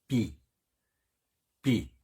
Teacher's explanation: 아래 윗 입술을 붙여서 벌리면서 내는 소리죠. 붙였다가 벌리면서 내는 소리입니다.